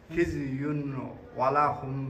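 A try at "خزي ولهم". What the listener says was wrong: Not يون. This one not clear تنوين. This تنوين should be hide.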